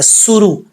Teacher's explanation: را کے اوپر پیش ہے، اس کو پر پڑھیں گے